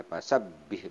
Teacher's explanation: ini ada tahzid dibacanya pasabbih ditahan